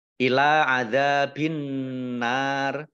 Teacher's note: lam fathah berdiri mat tobi'i, zal fathah berdiri mat tobi'i, masing-masing dibaca panjang 2 harokat